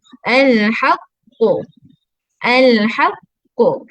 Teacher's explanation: Kita tahan suara dulu baru kita bunyikan lantunan suara dia. Lantunan suara bukan bunyi fathah.